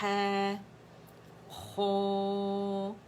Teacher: خو کے لیے آپ نے زبان کی جو جڑ ہے اسے اٹھانے، اور جو یوویلا ہے اسے ٹچ کرے گا، تھوڑا سا گیپ رہے گا تاکہ ہوا کا تھوڑا سا اخراج بھی ہوتا ہے